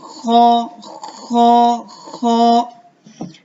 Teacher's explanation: یہ جو زبان ہے، ٹھیک ہے، یہ تالو کے حصے سے لگ رہی ہے اور خراش بھی پیدا ہو رہی ہے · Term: حرف خا